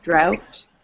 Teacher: when there's a T at the end, you still pronounce the T. It's not silent after O-U-G-H